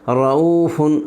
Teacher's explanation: را پر زبر ہے اس لیے را کو پر پڑھیں گے۔